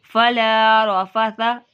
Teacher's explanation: سا میں دیکھیں سیٹی کی آواز نہ پیدا ہو